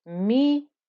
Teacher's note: And it's not minnel with a join from the meme to the noon. There is no join.